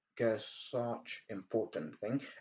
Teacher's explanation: c'est deux sons qui se rencontrent et ça va nous donner un long s